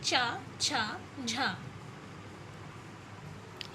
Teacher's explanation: इस प्रकार के व्यंजनों के उच्चारण में पहले स्पर्श और बाद में घर्षण होता है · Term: स्पर्श संघर्षी व्यंजन